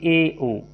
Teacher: अर्ध संवृत स्वर का अर्थ होता है मुख का थोड़ा अधिक खुलना, जैसे ए, ओ।